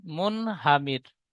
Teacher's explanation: র সাকিনের ডান দিকে জের এসেছে তাই রকে বারিক করে পড়তে হয়